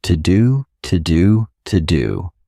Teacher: you can say to to. So a very unstressed to but connect it to your next sound